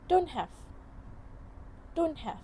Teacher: Instead of pronouncing the T sound, it is omitted.